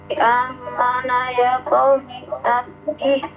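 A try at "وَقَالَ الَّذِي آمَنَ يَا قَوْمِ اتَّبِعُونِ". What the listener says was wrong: Jangan amana ya qaumi tattaqi. Yang bertasdid, yang tidak bertasdid jangan ditasdid. Wa qala allazi amana ya qaumi tabi'uni ahdikum sabilar rasyad.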